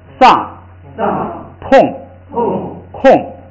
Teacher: 这个全是有在后加字仨的，也是把调摁下来